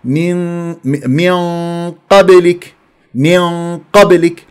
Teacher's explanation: الشده كيف روسيمت على الميم ثم نون بعدها قاف اخفاء قبلك اخفاء بغنه مفخمه مرتبه ثانيه ليش ثانيه مفتوحه القاف فاذا غنه مفخمه بمرتبه ثانيه رسل من قبلك اه من قبلك